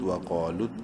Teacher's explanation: واو زبر وا، قاف الف زبر قا، ایک الف برابر لمبا کریں گے قاف کو الف مدہ کی وجہ سے، اور قاف کو منہ بھر کے پڑھنا ہے. قاف بولڈ لیٹرز میں سے ہے